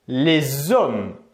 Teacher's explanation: Ici, lorsque l'on va faire la liaison, on va entendre le son Z.